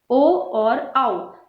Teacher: कंठोष्ठ्य। ओ और औ कंठ और ओष्ठ के भाग से बोले जाते हैं